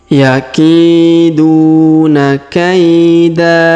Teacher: Jadi bukan kaidan tapi kaida ya, dipanjangkan 2 harokat.